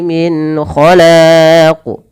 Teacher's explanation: ada qalqalah pada lafal huruf qaf dan wajib dipantulkan sebagaimana huruf dal. Dan kesalahan yang sama, kesalahannya yang membaca qalqalah itu tidak mantul dan menambah hamzah.